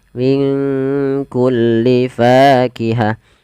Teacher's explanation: Di sini kita namakan dengan bacaan ikhfa. Maka cara membacanya, samarkan nunnya kepada huruf kaf, minku langsung kepada makhraj huruf kaf.